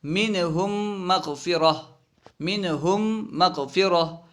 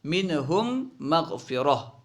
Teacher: دیکھیے ہم میں میم ساکن ہے، اس کے بعد مغفرہ ایک میم آ رہا ہے، تو یہاں پہ ادغام ہوگا، یعنی پہلے میم کو دوسرے میم میں ملا کے پڑھیں گے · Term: ادغام شفوی